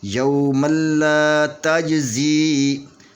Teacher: یوم اللہ تجزی، یہ زا کو یا کے ساتھ ملا کر پڑھیں گے، لیکن یا سے پہلے زیر ہے، تو اس لیے یہ یا مدیہ ہوگی، اس کو 2 حرکت کے برابر کھینچ کر پڑھیں گے